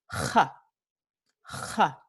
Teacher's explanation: una fricativa velar es una consonante que se pronuncia con fricción, pero en la zona velar de la boca